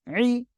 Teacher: আইন জের ই গলাটা চেপে পড়তে হবে